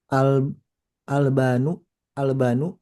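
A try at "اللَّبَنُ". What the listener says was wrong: ada tasydidnya.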